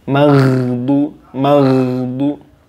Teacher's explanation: you see that the sound of ghayn isn't the sound of qalqala.